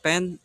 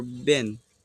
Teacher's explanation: P voiceless versus B voiced